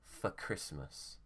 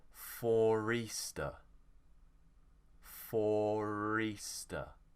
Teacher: we will actually pronounce the r to join us to the next word